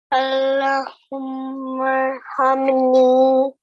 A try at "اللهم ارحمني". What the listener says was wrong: Over here, the lam mushaddad has a vertical fatha. Okay, so stretch for 2 counts. Allahumma arhamni.